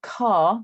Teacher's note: my accent doesn't produce the r if i have a word like car